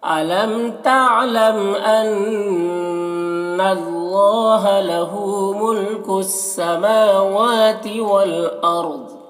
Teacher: والارض را کو پر پڑھیں گے اور ضاد کو بھی پر پڑھیں گے